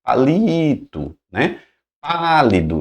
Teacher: Palito, veja que não tem acento, mas a tônica é no li. Então vai se estender, né, na hora que você chama.